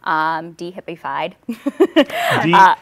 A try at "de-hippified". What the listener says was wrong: De-hippie. Just making sure we pronounce not HIPAA, hippie.